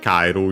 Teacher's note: the accent moves on the third to last because ae is considered a diphthong